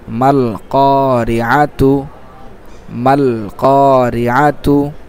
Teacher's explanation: শুধু কফের পর এক আলিফ, এটা কি মদ্দে তবাই হিসেবে, জবরের বাম পাশে খালি আলিফ, মদ্দে তবাই হিসেবে এক আলিফ টান হবে, বাকি আর কোথাও টান নেই। · মিমের উপর আছে, মাঝে আলিফটার কোনো হরকত নেই, এই জন্য আলিফটা বাদ যাচ্ছে